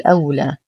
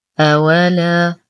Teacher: ننتبه كثيرا لفتحة الواو، لا نقول أولى، والصواب أولا. لدينا ألف ساكنة ما قبلها مفتوح فهو مد طبيعي يمد بمقدار حركتين.